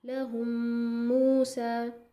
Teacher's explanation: जल्दी से नहीं पढ़ेंगे, आप क्या करेंगे 2 काउंट्स वहाँ पे गुन्ना करेंगे